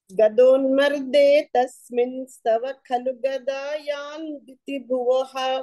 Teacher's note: మామూలుగా తస్మిన్ అనే పదమే కానీ తవాతో కలిసి సకారం వచ్చి అక్కడ అనుస్వార కూడా వచ్చేస్తుంది అన్నమాట